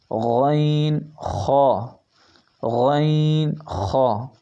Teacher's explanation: جو حلق کا پہلا حصہ ہے اس سے ادا ہوتا ہے